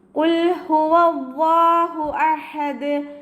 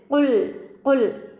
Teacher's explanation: നമ്മുടെ നാവിൻ്റെ ഏറ്റവും അവസാന ഭാഗത്തു നിന്നാണ് ഖാഫ് വരുന്നത്. അപ്പോൾ അവിടെ തന്നെ ഖാഫിൻ്റെ മഖ്റജ് നിന്ന് തന്നെ ഖാഫിനെ കൊണ്ടുവരാൻ ശ്രദ്ധിക്കുക.